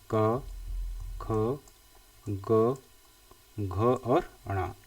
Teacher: ये जो कम वाले हैं वह कहलाएंगे हमारे अल्प प्राण जबकि ख और घ इसको बोलने में हमें हवा के ज्यादा जोर लगाना पड़ता है